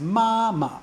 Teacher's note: you should be able to hear that the fifth tone is a very very short sound it's not emphasized it just kind of trails off